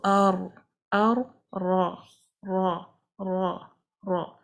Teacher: heavy letter the position of the tongue is almost the same the back of the tongue is raised towards the pallet throat is narrowed we have concaving of the tongue from the middle resulting in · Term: heavy pronunciation